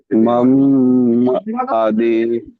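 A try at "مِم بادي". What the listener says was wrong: জি, মাম বাদি বলেন আপনি, মিম মিমের নিচে জের এসছে।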